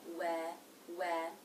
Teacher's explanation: It begins with the W consonant sound, where the lips will be in a very tight circle. Then the as in bed vowel, we.